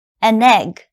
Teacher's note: Keep in mind that when you have an in front, it has to sound almost like one word.